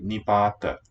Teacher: There was no halant. So this final letter keeps its schwa.